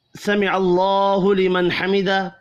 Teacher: حمیدہ وقف کی صورت میں ہا ساکن پڑھا جائے گا